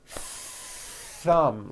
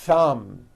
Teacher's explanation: notice how long i'm holding the th sound thumb it's not good enough just to put your tongue between